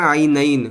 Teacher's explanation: جب یہاں رکیں گے تو عینینی کی جگہ عینین، نون کو ساکن کر دیں گے